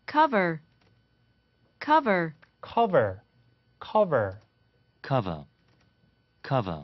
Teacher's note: 뒤에 R 사운드 빠집니다.